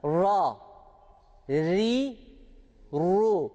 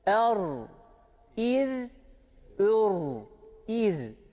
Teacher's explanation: ru kalın okunuyor değil mi fetha ve damm de ötre de Ra harfi kalın okunuyor ama Esre aldığı zaman ince okunuyor